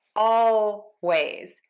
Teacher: You can, of course, say always with a true L. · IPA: /ˈɔlˌweɪz/